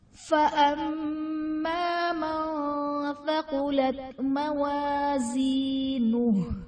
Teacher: فَأَمَّا میں میم مشدد ہے، یہاں پر غنہ کر کے پڑھیں گے